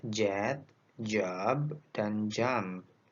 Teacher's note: Suara affricate j ini juga disebut sebagai voiced alveopalatal affricate.